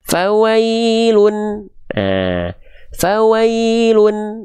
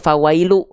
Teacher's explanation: Dibacanya harus pakai bukan cuman bunyi vokal u saja, tapi dia mesti dibaca dengan bunyi vokal konsonan un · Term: domahtain